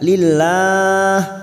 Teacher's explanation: karena kita wakaf di sini kita panjangkan 4 harokat.